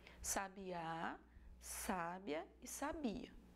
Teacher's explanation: é o acento a intensidade na vogal que faz essa diferença